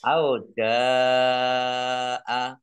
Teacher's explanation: karena bertemu dengan huruf hamzah dalam satu kata maka menjadi mad wajib muttasil dibaca panjang harus 5 harokat